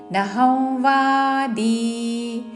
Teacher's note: అనుస్వారము నాసిక వ ఉచ్చారణ